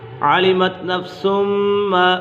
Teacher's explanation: میم مشدد ہے، میم مشدد میں ہمیشہ گنہ ہوتا ہے۔